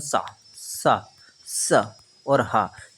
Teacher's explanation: सा सा स और ह तो उष्म व्यंजन और घर्षण व्यंजन कहलाते हैं